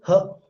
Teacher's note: And you have this glottal, h, that is glottal sound that is produced from here. So glottal is actually a place, but manner is fricative